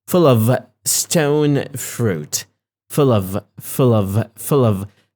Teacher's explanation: now I'm not stressing the word of I'm stressing the word full